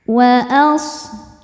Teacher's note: shadnya berdesis ya. punya sifat namanya shofir artinya berdesis ya seperti suara angsa